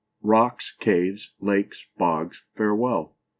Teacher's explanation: it is a foot with both syllables accented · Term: spondi